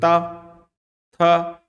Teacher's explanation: ये ता वर्ण जो है वो शुरू होता है दांत से ठीक है दांत से बोलोगे देखो त थ यानी दांत से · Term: दंत व्यंजन